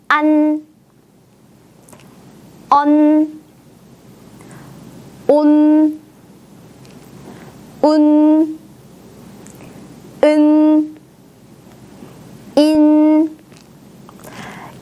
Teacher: 우리가 받침을 발음할 때는 혀를 떼지 않고 여러분 잇몸에다가 그대로 붙인 후에 공기를 막으면서 소리를 내면 되는데요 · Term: 받침 은